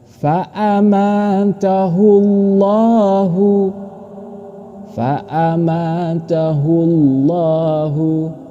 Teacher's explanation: Sesudahnya terdapat dhammah. Maka cara membaca lam jelalah ini harus dibaca tebal.